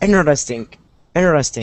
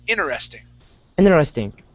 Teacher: we skip over that first T